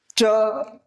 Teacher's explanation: જીભનો આગળનો આખો ભાગ ઉપર તાળવાને અડી અને હવાને અવરોધે છે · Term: તાલવ્ય